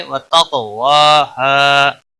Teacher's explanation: قاف حروف مستعلیہ میں سے بھی ہے اور حروف قلقلہ میں سے بھی ہے، جب ساکن ہوتا ہے تو اس پر قلقلہ بھی ہوتا ہے، موٹا بھی پڑا جائے گا۔ واو کے اوپر کھڑی زبر ہے، ایک الف کے برابر کھینچ کر پڑھیں گے۔